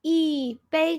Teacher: so 一 here's fourth tone. Okay, tone changing rule.